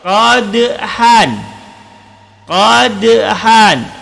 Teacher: Qadhan ada huruf dal. Dal termasuk huruf qalqalah dikarenakan dia berada di pertengahan perkataan, maka disebut qalqalah sughra.